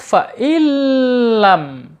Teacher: Ya, ingat ya, ketika ada tanwin atau nun sukun menghadapi huruf lam, ini bacanya idgham bila gunnah ya. Jadi nunnya dilebur ke huruf lam ya